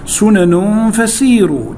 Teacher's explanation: سنن فسيروا، تنوين بعد حرف الفاء، والفاء من حروف الإخفاء